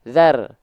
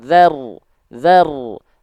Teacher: Bedakan antara zar dengan zaru. Bedanya cuma di pangkal lidah. Kalau tipis dia zar.